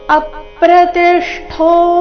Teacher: ಇಲ್ಲಿ ಅ ಮೇಲೆ ಆಘಾತ ತಿ ಮೇಲೆ ಆಘಾತ ಠೋ ನಲ್ಲಿ ಅರ್ಧ ಷ ಪೂರ್ತಿ ಠೋ ಮಹಾಪ್ರಾಣ ದೀರ್ಘ ಚೆನ್ನಾಗಿ ಕೇಳಿಸಬೇಕು ಅಪ್ರತಿಷ್ಠೋ